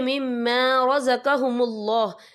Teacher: اللہ کا نام پر پڑھا جائے گا کیونکہ اللہ کے نام سے پہلے پیش ہے